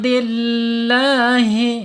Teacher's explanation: Ha makhrajnya ada di bawah tenggorokan ya.